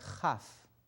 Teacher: a Chaf, which we don't have in English. It's a softer sound that comes from your throat. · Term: soft chaf